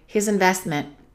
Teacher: let's eliminate the H on his investment and let's link the S to the I